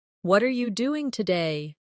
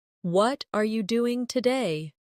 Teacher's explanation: the stress usually falls on what and doing.